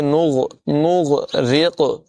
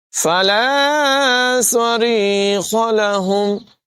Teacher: را کی ادائیگی باریک ہوگی، قاف میں قلقلہ کریں گے اور قاف کو پر پڑھیں گے۔